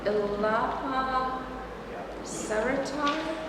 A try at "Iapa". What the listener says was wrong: It's pronounced Iapa, but I know it's spelled Ilapa.